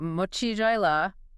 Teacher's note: mochila, definitely stressing CHI there